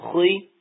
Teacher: تو خا زبر خا، منہ کھولیں گے، خا زیر خی، منہ ہلکا سا پستائی کی طرف جائے گا، پستی کی طرف جائے گا تو یہ آواز اس کی نیچی آ جائے گی